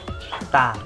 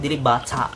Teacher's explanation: So the Filipino T is like a stopped/controlled T.